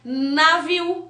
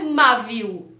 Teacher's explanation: Então, eu não uso o M, eu uso o N, que é a ponta da língua tocando raiz dos dentes de cima